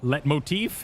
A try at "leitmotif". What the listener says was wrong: Leitmotif. Don't pronounce the T.